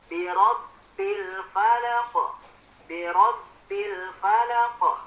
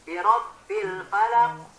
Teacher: Karena di akhir ayat, maka ini namanya qalqalah kubro. Qalqalah yang dibaca atau dipantulkan secara sedang.